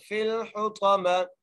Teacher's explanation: آگے طا ہے, طا کو موٹا کر کے پڑھیں گے, طا کے بعد میم ہے اور میم کو بغیر کھینچے پڑھیں گے.